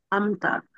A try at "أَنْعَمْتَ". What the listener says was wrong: এরকম হবে না যে আম আমতা হবে না, আন আমতা হবে। আমতা আর আইনটা উচ্চারণ করতে হবে গলার মাঝখান থেকে, ঠিক আছে?